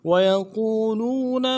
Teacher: قو میں واو مدہ ہے، ایک الف دال میں کھینچیں گے، لو میں بھی واو مدہ ہے، اس کو بھی ایک الف دال میں کھینچے کہ نون کو نرم سے پڑھیں گے.